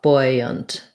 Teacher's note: It's like buoy, first syllable stress, and buoyant is more like boy, and then a schwa, buoyant. So they both have first syllable stress, but this one is a oo, buoy, and this one is an oi, like boy.